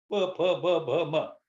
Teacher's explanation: तो पांचों के पांचों अक्षर जो है ये ओष्ठ्य हैं